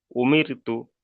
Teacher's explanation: র সাকিনের পূর্বে জের এসছে, এখানে র সাকিনকে বারিক করে পড়তে হবে